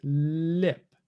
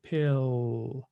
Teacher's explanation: The back of the tongue is involved a lot more when the L comes at the end of a syllable. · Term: dark L